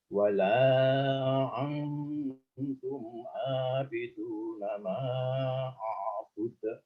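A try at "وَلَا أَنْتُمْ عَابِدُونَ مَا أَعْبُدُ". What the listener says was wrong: Dikeraskan lagi untuk antumnya. Wala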